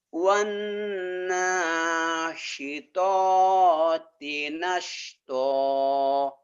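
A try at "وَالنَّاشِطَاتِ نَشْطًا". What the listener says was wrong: Bagus ini ya.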